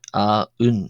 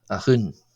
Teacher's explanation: As I say, it will be required together with the cardinal number or the impersonal number, as one can see here. And before a vowel, you don't get, for example, for the number 1, a un, you get a hun.